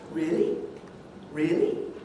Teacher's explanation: you give a rise in a mid or even a high key so something like a high rise really really that's positive really